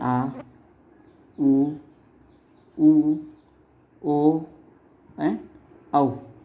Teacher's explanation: पच्छ स्वर यानी जीभ का जो पीछे वाला जो भाग है, बीच वाला भाग से अ हो गया, पीछे वाला जो भाग है उससे बोले जाने वाले स्वर, जैसे आ, ऊ, ओ एंड औ। ये दोस्तों पीछे वाले भाग से बोले जाते हैं, जिन्हें पच्छ स्वर भी कहा जाता था।